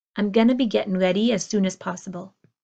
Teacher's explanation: you hear the I am becoming I'm